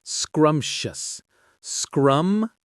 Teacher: 2 syllables, with the stress on the first one.